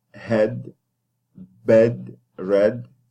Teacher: So mid front, and then lax, unrounded.